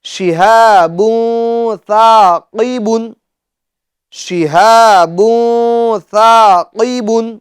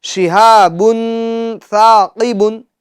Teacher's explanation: شہاب ثاقب، شہاب ثاقب، جی ناظرین کرام، گنہ ہمیں ناک میں آواز لے جا کر کرنا ہے۔ تنوین کی جو آواز ہے وہ ناک میں پوشیدہ رکھنی ہے، نون ساکین کی جو آواز ہے وہ ہمیں پوشیدہ یعنی چھپانی ہے۔